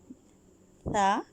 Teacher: یہ نرم اور باریک حرف ہے، یہ زبان کی نوک سے ادا ہوتا ہے، یہ زبان دکھاتا ہے